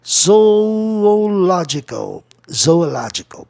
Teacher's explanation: Zoológico, a palavra proparoxítona, eu vou buscar a sílaba tônica na terceira casa silábica de trás para frente, que é no L-O.